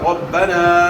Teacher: را کے اوپر زبر ہے، را کو موٹا ادا کرنا ہے، اور یا پھر الف مدہ ہے، زبر کو آپ بھیجیں گے تو الف ادا ہوگا.